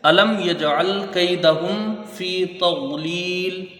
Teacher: میم ساکن کے بعد یا ہے تو یہاں اظہار شفوی ہوگا۔ میم کو ظاہر کر کے بغیر غنہ کے جلدی پڑھا جائے گا۔